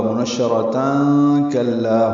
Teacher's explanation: اگر ملا کے پڑھنا ہے تو آگے کاف آ رہا ہے تو اخفا ہوگا، منشرتاً کلا ہوگا.